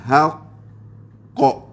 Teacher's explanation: Ini qalqalah akbarul kubra. Kena tahan boleh sampai 2 second